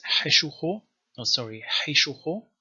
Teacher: So in East Syriac there are two different vowels here, O and U, whereas West Syriac only has U. I mean, West Syriac also has O, but that one corresponds to the East Syriac A.